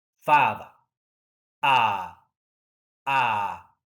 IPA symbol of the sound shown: ɑ: